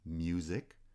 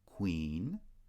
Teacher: Music has the palatal glide, queen has the labial glide.